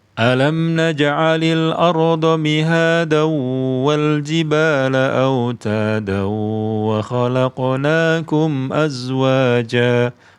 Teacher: Kalau nyambung, maka berlaku tanwin bertemu waw. Tanwin, ya, bertemu waw. Jadi idgham.